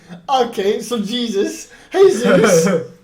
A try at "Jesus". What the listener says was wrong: No. That's Spanish. Just Jesus.